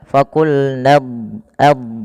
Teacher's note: huruf dad itu kan makhrajnya sisi lidah kita bertemu dengan gigi raham atas